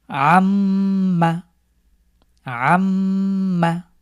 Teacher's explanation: মিম এর উপরে থামছি এবং নাকের নিচে দিয়ে গুন্না করে পড়ছি। এটাই হলো ওয়াজিব গুন্না। · গুন্না মানে হলো নাকের নিচে দিয়ে একটু দীর্ঘ করে স্ট্রেস দিয়ে পড়ব